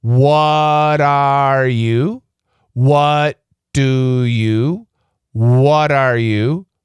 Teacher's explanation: the faster Americans say it, that R sound disappears.